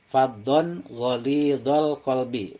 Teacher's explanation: Dibacanya jelas tanwinnya dan tanpa mendengung. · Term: idhar halki